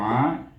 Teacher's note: ain baris di atas bunyinya a, dengan huruf tengah halkum